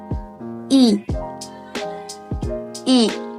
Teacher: lidah di posisi depan, bibir tidak bulat, dan mulut sedikit terbuka. I. Lidah di posisi depan. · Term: vokal I